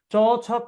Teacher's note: চ ছ পড়েন, চ ছ জিব্রাটা তালুর সাথে বাড়ি খাচ্ছে, এই জন্য এটার নাম তালব্য ধ্বনি